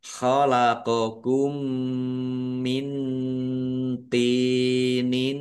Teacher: mim sukun bertemu dengan huruf mim idgham mutamasilain atau idgham mimi dibaca mendengung ya mendengung Mim ditandai mimnya ada tasdidnya.